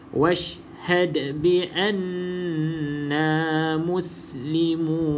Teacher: lantunan dia sedikit kuat lah berbanding dengan qalqalah sughra tu, sebab dia qalqalah kubra yang berada di hujung kalimah ataupun perkataan